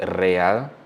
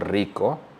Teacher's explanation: the English k a your R is a special case right at the start of a word the single R is pronounced like a Double R